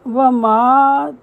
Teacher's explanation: واو کے اوپر زبر، ماں کے اوپر زبر، لیکن ساتھ الف ہے اس لیے لمبی آواز آئے گی۔